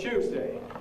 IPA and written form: ˈʧuːzdeɪ (Tuesday)